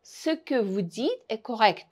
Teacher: Le pronom ce ne se trouve jamais en position accentuée et perd souvent son e.